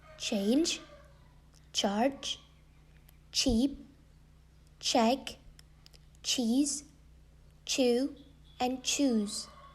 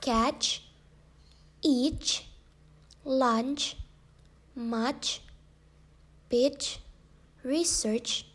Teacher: the sound of chi is palato alveolar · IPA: tʃ